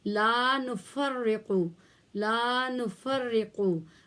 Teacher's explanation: را کو باریک پڑھا جائے گا کیونکہ اس کے نیچے اٹ سیلف زیر ہے، تو 2 دفعہ پڑھا جائے گا کیونکہ تشدید ہے. لا یہاں الف مدہ ہے، اس لیے ایک الف لمبا کیا جائے گا